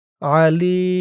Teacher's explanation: ওয়াকফ করার কারণে জেরের পরে ইয়া সাকিন এক আলিফ টান ৩ আলিফ হয়ে গেছে